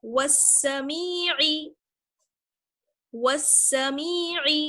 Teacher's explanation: واو کو ڈائریکٹ ہم سین سے ملائیں گے، الف اور لام بیچ میں ہے لیکن پڑھا نہیں جائے گا، واو سین زبر وس، سین زبر سا، وسا، میم یا زیر می، والسمی، عین زیر عی، والسمیع، والسمیع۔ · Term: حروف شمسی